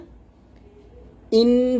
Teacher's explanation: ইন বলে আমি একটা শব্দ করছি এটা আমি নাকের থেকে নিয়ে আসছি এটাই মূলত গুন্না